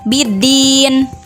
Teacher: fathah ya mati sebelumnya berharokat kasroh Wow mati sebelumnya berharokat Dumai dalam keadaan waqaf maka dibacanya panjang sebanyak enam harakat atau tiga Alif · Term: Mad Arid lissukun